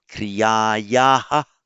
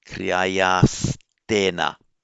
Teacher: the final visarga becomes an S because of the following ta